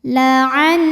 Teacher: Cara bacanya didengungkan, jadi bunyi N tahan sampai ada suara masuk hidung. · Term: gunnah musyaddadah